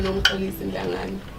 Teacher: Well, it's the X in my name. The X is the one that makes that a click. sound. Yeah.